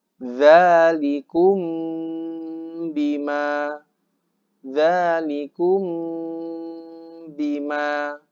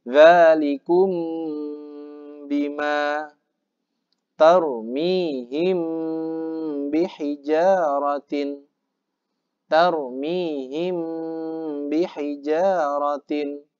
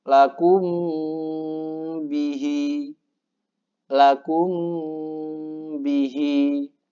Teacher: Bunyi mim disamarkan dengan cara menempelkan kedua bibir ya. Jadi karena di depannya huruf ba, jadi ketika kita membaca mim sukun itu sudah siap-siap untuk mengeluarkan huruf ba.